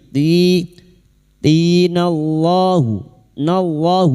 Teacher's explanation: lam jalala yang didahului fathah dibaca tafkhim